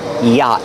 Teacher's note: the t is a stop T at the end after the vowel